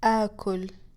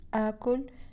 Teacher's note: two hamzas combine to make alif madda